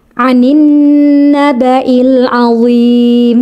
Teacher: Suara nunnya sempurna ya. Lam masuk pada huruf nun secara sempurna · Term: idgham syamsiyah